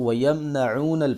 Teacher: اکثر لوگ میم ساکن ہو تو وہاں پہ غنہ کر دیتے ہیں، غنہ نہیں کریں گے، اس کو وَيَمْنَعُونَ پڑھیں گے۔